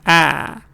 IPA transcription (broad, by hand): æ